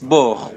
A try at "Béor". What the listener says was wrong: Béor, il y a un accent. Béor.